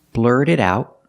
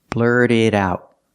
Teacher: So the T in blurt is a fast D, the T in it is a fast D, and the T in about is a fast D.